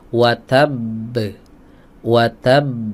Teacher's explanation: Qalqalah kubra juga jatuhnya ya Qalqalah Kubro juga Ah hanya saja Qalqalah Kubro ini Qalqalah yang dihadirkan dengan lambat ya hadirnya lambat Kenapa karena masih ada huruf yang kembar sebelumnya